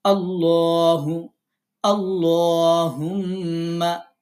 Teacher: আল্লাহ শব্দের লামকে মোটা করে পড়া আল্লাহ শব্দের লামের পূর্বের হরফে যখন জবর বা পেশ দিয়ে পড়া